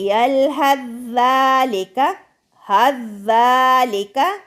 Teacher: سا اپنے مخرج یعنی ملتے جلتے حروف میں چھپ گیا، مدغم ہو گیا